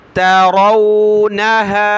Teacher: रा वाव ज़बर रौ, मोटा करेंगे, रा कलरफुल है